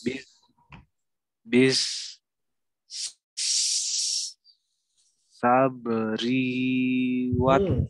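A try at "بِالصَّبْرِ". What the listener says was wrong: Ri-nya pendek.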